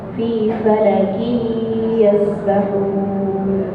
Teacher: Ada tanwin ketemu ya, dibaca idgham pakai gunnah.